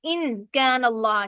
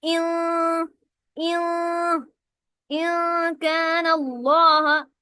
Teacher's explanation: ان کے اندر جو نون کی ساؤنڈ آتی ہے اس کو چھپانا ہوتا ہے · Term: اخفا